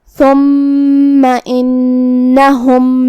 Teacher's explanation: मीम पे तशदीद है तो हमें 2 हरफ के बराबर मीम को पढ़ना है